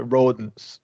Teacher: You're not going to release the T.